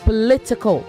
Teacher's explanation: It's a syllabic consonant, the L there.